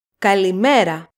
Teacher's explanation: when we pronounce the word kalimera we stress the second syllable from the last met so that's where we put the accent kalimera the second